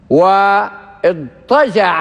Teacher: فتاء الافتعال حينما جاءت بعد الضاد أبدلت طاء، وهذا شأنها حينما تلي حروف الإطباق الأربعة الصاد والضاد والطاء والظاء تبدل تاء، فهي جاءت بعد الضاد وهو حرف مطبق فأبدلت طاء.